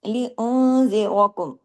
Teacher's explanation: रॉ को heavy पढ़ना है जबर की वजह से।